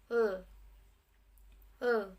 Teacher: alveolar yang dengan cara lateral aproksiman ada l.